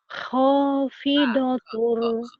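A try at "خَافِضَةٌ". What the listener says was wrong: Kha. Jangan terlalu kotor. Kamu ho-nya bisa, tapi jangan kotor-kotor amat. Kha. Biasanya kha. Jangan kotor-kotor amat ya. Khafid. Kurangin dikit. Orang-orang nggak bisa, kamu pinter tuh ho-nya. Cuman jangan terlalu ngorok amat. Kebanyakan ya, kayak orang mau gitu. Khafidah.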